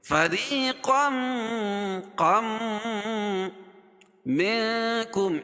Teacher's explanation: تنوین کے بعد ادغام مع الغنہ کے 4 حرفوں میں سے میم آ جائے گی تو یہاں غنہ کر کے پڑھیں گے